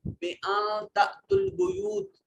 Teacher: بِأَن تَأْتُوا الْبُيُوتَ نون ساکن ہے، اس کے بعد تا حروف اخفا میں سے آ گیا. یہاں نون کو اپنے مخرج میں چھپا کر پڑھیں گے، اخفا ہوگا